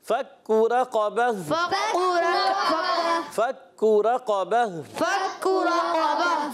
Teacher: अच्छा, काफ को ज़रा रुक कर अदा करना है क्योंकि तशदीद है।